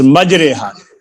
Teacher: اس کھڑے کو یائے مجہول کی طرح پڑھنا چاہیے، جیسے اردو میں لفظ ہمارے کی را کو پڑھتے ہیں. اکثر لوگ اس کھڑے زیر کو بھی اور کھڑے زیروں کی طرح معروف ہی پڑھتے ہیں. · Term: امالہ